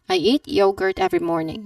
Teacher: the first vowel, the first syllable sound is yo. Yo, not you, but yo sound at the beginning of yogurt